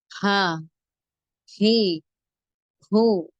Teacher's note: அடித்தொண்டையிலிருந்து வெளியாகும் நெஞ்சிலிருந்து காற்றை வேகமாக வெளிப்படுத்த வேண்டும்